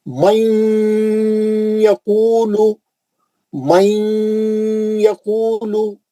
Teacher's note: آدھا نون آدھا یا، گھس جانا یا کے اندر، غنہ کرنا · جب بھی قرآن میں نون ساکن یا تنوین کے بعد یا آئیں گا کیسا پڑھنا؟ نون کو لے کے یا میں گھس جانا اور غننے سے پڑھنا